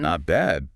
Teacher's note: If you use a high pitch, not bad, with an upward inflection.